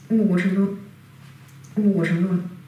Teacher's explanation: the two words only differ in the pitch of the final word, final syllable